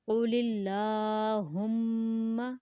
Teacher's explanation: اللہ letter سے پہلے زیر ہے اس لیے ہم نے اللہ کو باریک پڑھا